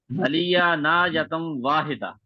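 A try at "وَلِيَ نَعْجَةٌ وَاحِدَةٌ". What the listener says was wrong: जबर पढ़ रहे हैं।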